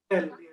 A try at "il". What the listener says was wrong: Eel. It's not ill. It's eel. Eel. Add as many e's as you can. E. Eel.